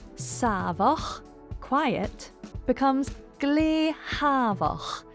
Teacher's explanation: S lenites to a H sound.